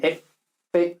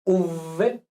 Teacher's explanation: Si nos ponemos la manita aquí, pues vemos que en F no vibra, pero si decimos V, sí vibra